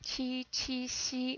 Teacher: When you make the English sh or ch, your tongue is farther back. When you make the Chinese X or Q sound, your tongue is actually almost or actually touching your front teeth. And your tongue, not only is it more forward, it's higher, so the air has to, and the sound has to travel through a narrower channel. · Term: the Q or the X